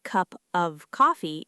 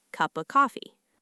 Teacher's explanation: In rapid speech, the F sound at the end of completely evaporates if the next word begins with a consonant. The word shrinks into a pure, naked schwa grunt. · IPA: [cup-ə-coffee]